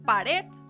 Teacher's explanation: La única que sería aguda en este caso es pared, que podríamos notar que la sílaba tónica o la sílaba fuerte está en la palabra red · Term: palabra aguda